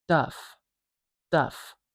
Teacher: D in English does not have aspiration. It does not have that little puff of air like a T does. So our brain will just default to the next closest unaspirated sound.